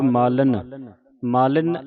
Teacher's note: ਜਿਹੜੀ ਨੰਨੇ ਨੂੰ ਸਿਹਾਰੀ ਹੈ ਇਹ ਸਾਈਲੈਂਟ ਹੋ ਜਾਂਦੀ ਹੈ।